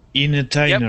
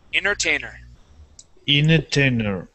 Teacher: without that first T Entertainer